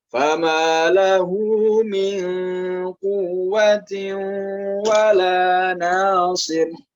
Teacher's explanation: tanwin bertemu dengan huruf wawu, hukum bacaannya adalah idgham bi gunnah, dibaca dengan dengung.